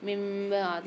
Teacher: یہاں اقلاب والا قاعدہ ہو رہا ہے, میم کو چھوٹی سی میم سے ملا کر غنہ کر کے پڑھیں گے